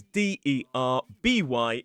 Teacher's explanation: It is Darby, with that long /ɑː/ vowel sound